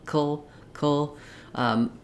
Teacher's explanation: to go right from my to my o sound col um where the L can be a full syllable by itself with just a little tiny schwa as I connect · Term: syllabic l